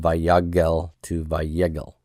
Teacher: The segol broke up the gimel lamed consonant cluster, and then the A vowel harmonized to the segol.